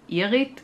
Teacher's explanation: the emphasis is on the second syllable and not on the I